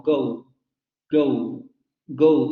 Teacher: se darán cuenta que al final aparece una vocal como si hubiera un diptongo ahí · In English, the vocal organs often relax during the pronunciation of a vowel, so that it ends in a sort of a glide.